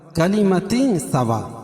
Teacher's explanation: تعالوا واولین، الا کھڑا زبر ہے، کلمۃ سوا اخفا حقیقی کیونکہ تنوین کے بعد حروف اخفا کے 15 حرفوں میں سے سین ہے تو یہ ناک میں آواز کو چھپا کر پڑھیں گے